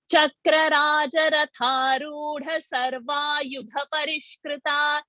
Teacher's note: Tha is a dental word, so the tip of the tongue should touch the teeth. But dha is a murdhani word. The tip of the tongue should touch the roof of the palate.